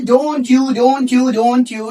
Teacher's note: for flow we will introduce the ch sound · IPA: /tʃ/